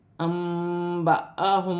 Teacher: नून साकिन की आवाज़ को मीम से बदलना है